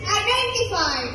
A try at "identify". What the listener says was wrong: It's not identify, it's identify. Stop pronouncing T when you speak English.